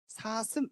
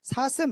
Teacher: 혀가 가까이 있죠 가까이 있어서 뭔가 공기가 막혀 있는듯한 느낌은 듭니다 근데 그 사이로 공기는 계속해서 내보낼 수 있죠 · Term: 마찰음